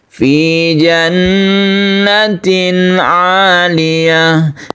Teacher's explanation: Jan kita tahan karena ghunah musyaddada